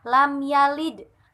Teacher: cara membaca qalqalah sughra yaitu dengan lam yalid, sedikit memantul karena sughra atau kecil.